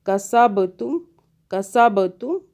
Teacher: با پہ قلقلہ ہوگا، جھٹکا دے کے پڑھیں گے